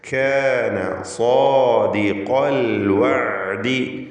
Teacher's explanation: കാന അതിലുള്ള അലിഫും സാദിഖ ഇതിലുള്ള അലിഫും തമ്മിലുള്ള വ്യത്യാസം നോക്കൂ. ഒന്ന് തർക്കീഖാണ്, മറ്റത് തഫ്ഖീമാണ്. ഒന്ന് ഇസ്തിഫാലിൻ്റെ ഹർഫിനെ ദീർഘിപ്പിക്കുന്നു, മറ്റത് ഇസ്തിഅലാഇൻ്റെ ഹർഫിനെ ദീർഘിപ്പിക്കുന്നു.